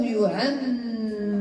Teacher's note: ميم مشددة غنى مقدار حركتين راء مفخمة